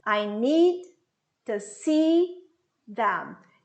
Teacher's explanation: Eu tenho dois verbos, os dois verbos são mais fortes na frase. Essa é a entonação.